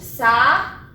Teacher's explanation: O meu U é a minha sílaba tônica. Ele é a sílaba mais forte da minha palavra.